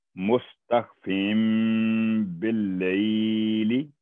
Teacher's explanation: یہ دیکھیں، یہ ریڈ کلر میں فا ہے تو فا کے نیچے تنوین ہے اور ساتھ میم ہے چھوٹی سی، تو یہ فن نہیں ہوگا، تنوین کی نون نہیں بولے گی، بلکہ فم فم کر کے بولا جائے گا۔ مستخفم باللیل، جب بھی چھوٹی سی میم دیکھیں تو تنوین کی نون پھر وہ ریموو ہو جائے گی، وہ نہیں پڑی جائے گی۔ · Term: اقلاب